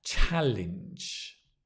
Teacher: The stress on the ch, or the cha, as it says, cha.